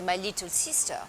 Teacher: a French person will turn little I's into the E sound. So instead of my little sister, a French person will say my little sister.